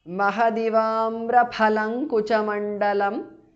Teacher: mahadivamraphalam because of sandhi kuchamandalam is a compound word amraphalang kuchamandalam because of sandhi anuswara changes to nga there